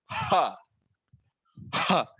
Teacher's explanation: ह कंठ्य अक्षर है, कंठ से इसकी निर्मित होती है, ह ह। और ये महाप्राण अक्षर है, बहुत सारा सांस यहाँ पर बाहर फेंका जाता है।